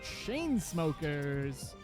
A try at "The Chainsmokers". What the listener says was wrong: The Chainsmokers. The Chainsmokers. You gotta pronounce the the.